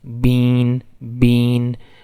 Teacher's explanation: pronouncing of a sound with air flowing through the nose typically before a nasal consonant so actually a sound which is not usually a nasal sound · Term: nasalization